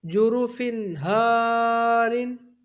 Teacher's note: تو یہاں پر اظہار ہوگا، یعنی غنہ نہیں کریں گے. جیم پیش جو، را پیش رو، جرو.